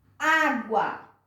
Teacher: Quem é a sílaba tônica? É a última? Não, é a penúltima.